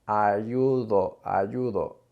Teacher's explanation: So we in English, we have a harder D as in dog or done. But in Spanish, we've got a much softer D, so it's closer to the sound from then or there.